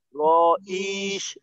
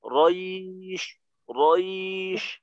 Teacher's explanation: আর রটা যেন ইয়ার সাথে মিলিত থাকে